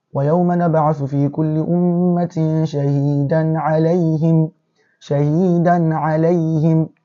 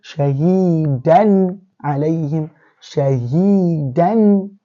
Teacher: Can you see the fathatan here is being pronounced showingly, vividly. We can hear it. It's not been hidden. It's not been changed. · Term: Izhar